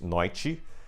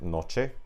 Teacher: Because if I have a word in Latin like noctem, which means night, and then I have noite, if this t sound becomes soft enough, or it becomes palatized enough, I should say, it can shift into a ch sound over time. So that's why I have in Spanish a word like noche, whereas I have in Portuguese noite, which that's just Brazilian pronunciation actually, and in Portugal I think it would be something like noite.